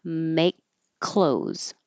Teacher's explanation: And this K on make, there's a silent E here, so it's easier to see when you write it without the silent letters. You hold that K, make, and then you release it on the following K, which looks like a C, but it's really a K.